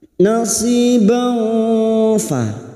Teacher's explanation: Kita samarkan bunyi fathah tanwin dan mendengung selama 3 harkat. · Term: ikfa hakiki